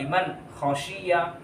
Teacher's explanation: حروف حلقی میں سے ہے، حمزہ، ہا، عین، ہا، غین، خا، خا آ گیا، نون ساکن کے بعد خا آ کر ہے، اس لیے یہاں پر نون اظہار ہو کر پڑھیں گے، بلا غنہ پڑھیں گے، غنہ نہیں کریں گے۔